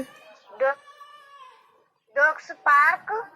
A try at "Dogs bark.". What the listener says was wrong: पार्क नहीं बेटा, बार्क, BARK, बार्क।